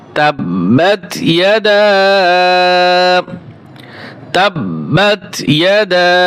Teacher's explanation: যেহেতু বার উপরে তাসদিদ রয়েছে এবং এই ওয়াকফ হবে, তাই এখানে তাসদিদওয়ালা হরফগুলি একটু জমে আদায় করতে হয়, অর্থাৎ একটু ধরে আদায় করতে হয়। এখানে একটু এই যে তা বা জবর তা একটু ধরতে হবে, ওয়াতা একটু ধরে বসতে হবে, সময় নিতে হবে।